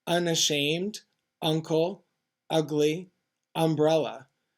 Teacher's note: at the beginning of a word with a glottal plosive sound